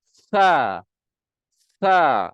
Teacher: Hujung lidah keluar dan terkena hujung gigi atas